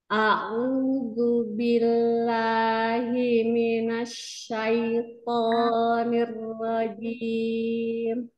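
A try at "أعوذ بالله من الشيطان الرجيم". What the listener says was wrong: huruf thnya sudah bagus tebalnya tinggal kasrah-kasrahnya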